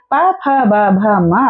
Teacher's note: ऐसे ही प, फ, ब, भ, म अगर हम बोलेंगे तो हमारे होठ टच हो रही होती हैं एक दूसरे से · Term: प वर्ग